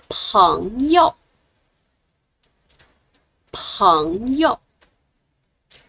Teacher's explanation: when I read the second character, I use the neutral tone. It's light and fast.